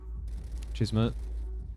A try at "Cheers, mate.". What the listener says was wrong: When you said cheers, mate, it sounded like you said cheese, mate. Cheese, mate.